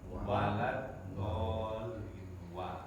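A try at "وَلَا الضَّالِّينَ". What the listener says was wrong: Nah, wa ini huruf apa namanya di bibir. Wa keluarnya dari antara dua bibir kita. Bukan wa dari dalam bukan. Wah enteng aja dia huruf bibir. Safatani, dua bibir, keluarnya dari dua bibir kita.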